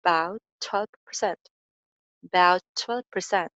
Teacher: about का जो ending sound है छ और next भी starting sound छ है, so इनको हम single कर देंगे